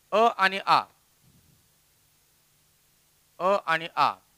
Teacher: अ आणि आ या दोन्ही स्वरांचा उच्चार कंठावर होतो, म्हणजेच पडजिभेच्या अलीकडे जी जागा आहे त्याच्यावरती होतो, म्हणून यांना सजातीय स्वर म्हणायचं.